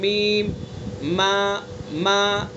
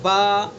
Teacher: دونوں ہونٹوں کی خشکی کا حصہ، جو باہر والا حصہ ہے جو سوکھا رہتا ہے، خشک رہتا ہے، تو دونوں ہونٹوں کی خشکی کے حصے سے میم کو ادا کریں گے، میم، ما، اور تر والے حصے سے با، باہر والے حصے میں آ جائیں گے ما، تو یہ ہے میم کا مخرج۔